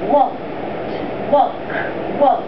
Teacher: there isn't any sound in here no vibration so then we call it voiceless a voiceless ending